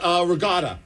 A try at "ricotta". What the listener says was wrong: Ricotta. I'm like, it's not a G, it's a C in there.